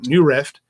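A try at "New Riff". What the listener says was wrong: New Rift. It's not a rift. Riff.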